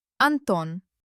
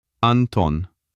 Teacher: Did you feel how the tongue hit the teeth twice on the N and on the T?